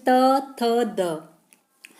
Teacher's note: दंत जो है ये दांतों से जीभ छिमती है हमारी, जैसे त, थ, द।